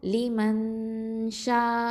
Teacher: நூனை மறைச்ச கொன்னா செஞ்சு ஓதணும். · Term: இஹ்ஃபா சட்டம்